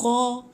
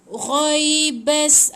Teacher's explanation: ada bunyi bergeser dekat anak tekak tu. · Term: huruf ghain